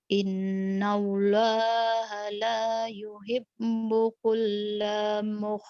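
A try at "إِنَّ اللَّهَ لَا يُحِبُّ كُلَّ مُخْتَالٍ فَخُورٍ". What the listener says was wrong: Pendek. Innallaha la yuhibbu kulla mukhtalin fakhur. Jangan kulla, nggak ada yang manjangin. Nah ini latihannya harus disentak-sentak nih nanti.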